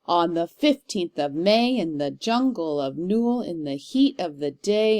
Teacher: we start with 2 unaccented syllables, and then we accent the 3rd one when we read it. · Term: Anapestic meter